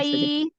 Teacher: Ketika kita mengucapkan huruf waw, karena huruf waw adalah huruf asyafatain, huruf yang keluar dari kedua bibir, maka posisi asyafatain kita ya itu sudah monyong, baik itu berharokat fathah, kasroh, dhammah, maka monyongkan.